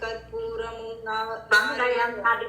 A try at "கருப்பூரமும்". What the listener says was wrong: கருப்பூரமும் நாரிவர. கருப்பூரமும்னா நம்ம பேச்சு வாக்குல கற்பூரம் அப்படி சொல்ல, அங்க பாரு ரூதானமா இருக்கு. அதனால பங்கயம் நல்ல கருப்பூரமும் நாரிவரன்னு பிராக்டிஸ் பண்ணிக்கிறோம்.